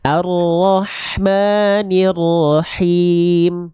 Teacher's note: ha kecilnya kuatkan lagi. Tengah tenggorokan berbisik.